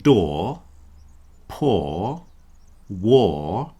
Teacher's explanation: If we look at words like door, poor, war, they all end in an R which you don't hear. And of course, if I then follow it with another vowel, that R will reintroduce itself. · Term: non-rotic accents